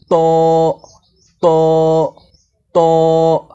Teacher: ত হরফকে জিহবার আগা উপরের তালুর সঙ্গে লাগিয়ে মোটা করে পড়তে হয়